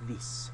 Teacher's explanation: the middle of the tongue is pushed forwards further I think with the Aussies so it becomes almost like these t h e e but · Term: short I